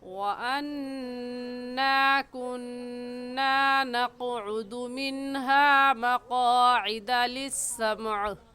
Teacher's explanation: وَأَنَّا میں نون مشدد ہے اور نون مشدد پر غنہ کرتے ہیں